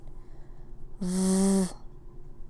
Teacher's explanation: You can hear your vocal cords. So, it is voiced.